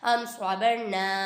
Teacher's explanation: حمزہ میم زبر ام، صاد زبر صا، ام صبا، را زبر بر، ام صبر نون الف زبر نا، ام صبرنا۔ یہاں پہ میم ساکن کے بعد صاد آ رہا ہے، ادھر اظہار شفیع ہوگا، ادھر گنہ نہیں کریں گے